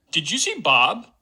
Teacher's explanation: we've actually got a low star on Bob because that's kind of the element that's being focused here and then there's a quick rise up to the age boundary